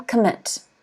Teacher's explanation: And the stress is on the second syllable.